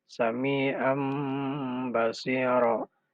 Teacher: Namun karena dia masuk dalam kaidah iklab, maka an ini lebur ke dalam ba menjadi mim.